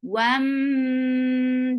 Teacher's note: this is with gunna, so keeping the sound in your nose for a longer time